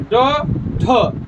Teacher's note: बोलिएगा तो देखिएगा जीभ हल्का सा नीचे आएगा झटका में · ऐसे व्यंजन वर्ण जिसके उच्चारण में जीभ जो है झटका से नीचे आती है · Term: द्विगुण व्यंजन